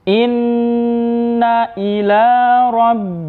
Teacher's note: Apabila ada nun yang bertasydid maka disebut wajibul ghunnah sehingga kita harus membaca ditekan ditahan dijelaskan dan didengungkan